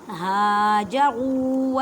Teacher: ہاجروا را کو موٹا پڑھیں اور را کو ایک الف کی مقدار میں کھینچ کر پڑھیں